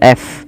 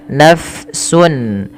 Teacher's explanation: kita kenal dengan istilah sifatnya namanya hames, yaitu mengalirnya nafas. Nah, dia ketika ada fa alirkan nafasnya.